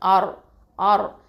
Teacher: இந்த ரா சுக்கூன் வந்து என்ன பண்ணுவோம்? தஃப்ஹீமாக ஓதணும், ஹெவியாக தான் ஓதணும். அடுத்தது ஏன் அப்படின்னு சொன்னால் அதுக்கு முன்னாடி எழுத்து ஃபத்ஹா வர்றதுனால.